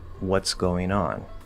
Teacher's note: And that's if you're speaking more lazily or especially faster, you can completely ignore that T position and just go into an S